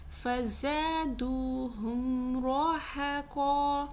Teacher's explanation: را موٹا نکل رہا ہے, مفخم. قاف بھی موٹا نکل رہا ہے, لیکن ہا بیچ میں باریک ہے. ایسے نہیں پڑھ رہی میں کہ را ہا قا, نہیں, را ہے قا, را ہے قا.